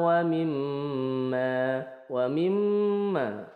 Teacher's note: mim bertasdid namanya gunah karena bertasdid lebih lengkapnya adalah ghunah musyaddadah W mim dibaca dengung dua harakat